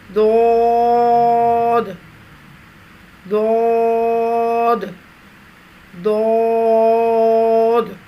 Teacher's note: زبان کے موٹے کناروں کو اوپر والی داڑھوں کی جڑ پر آہستہ آہستہ نرمی سے لگا کر خوب موٹی اور دراز آواز میں پڑھیں گے. دراز آواز ہو، موٹی ہو، اور زبان کی پچھلے حصے کو تالو کی طرف بلند کرتے ہوئے خوب موٹی آواز میں ادا کریں گے.